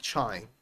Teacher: The word career and carrier, we talked about this before. Trying, sometimes T and R together are heard as che, like trying.